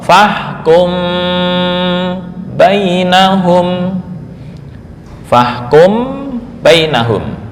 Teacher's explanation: poin yang kedua masih di tingkatan ketiga adalah ikhfa mim sukun sebelum huruf ba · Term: ikhfa syafawi